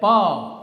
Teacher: Okay, like pa. Here, obstruction is done by the two lips